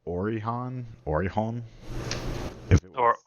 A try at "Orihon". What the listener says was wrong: Or the H is like less pronounced. It's Orion.